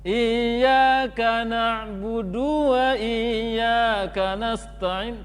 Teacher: Du terpanjangkan. Kemudian ya-nya ke hidung.